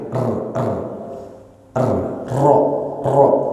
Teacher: huruf ini adalah huruf yang memiliki sifat tkin tebal dan dia itu punya sifat lain yaitu takrir bergetar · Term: huruf ro